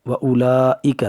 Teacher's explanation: وَأُولَٰئِکَ تو 4 الف کے برابر کھینچ کر پڑھیں گے۔ وَأُولَٰئِکَ ہا پیش ہو، پیش کو جلدی پڑھیں، ذرا بھی نہ کھینچیں۔ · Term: مد متصل